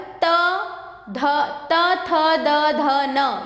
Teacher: ये दांत से छूकर निकल रहे हैं तो ये दंत्य